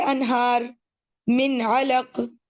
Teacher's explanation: ہم نون کو اس کے مخرج سے ادا کرتے ہیں اور اس کے غنہ کو ایگزیجریٹ نہیں کرتے، ٹھیک، اس کے ساتھ زیادتی نہیں کرتے. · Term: اظہار حلقی